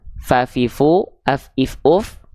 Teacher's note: ujung gigi Sari atas kita disentuhkan dengan bibir bawah bagian dalam yang basah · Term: huruf Fa